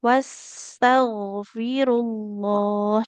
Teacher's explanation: Huruf gin harus mengalir suaranya. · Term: Huruf ghain